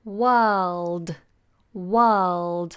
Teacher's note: the R is silent and the L is sounded so you have to get the tongue tip up on to the roof of the mouth